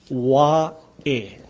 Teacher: See, the A in this last word is kind of pronounced Wa'e. This is the Okina, or the glottal sound. That's the punching sound.